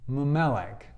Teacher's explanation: So if you wanted to say min melech, what would happen is the nun, min melech, when you push those together, the nun drops out and doubles the next consonant. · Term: assimilated nun